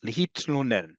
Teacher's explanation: We don't have TL, the equivalent of TL with no vowel in between. Hebrew does.